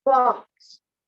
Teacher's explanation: there is no o sound in there it's just ah